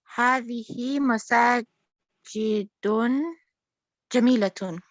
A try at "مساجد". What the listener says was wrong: مساجد, not مساجد. مساجد. Masajid is one of those nouns which do not get a tanween.